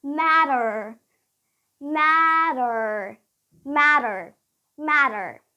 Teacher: if you want to sound more American then you would use the flap T